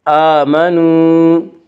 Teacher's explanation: آمنوا، وا مدہ وہ جو ساکن اس سے پہلے پیش ہو، وا مدہ کو 1 الف کے برابر کھینچ کر پڑھیں گے